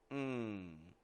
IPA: ŋ